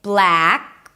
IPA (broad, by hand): blæk